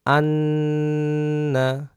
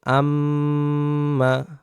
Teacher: নুন এবং মিমে তাসদিদ হলে ওয়াজিব গুন্না করে পড়তে হয়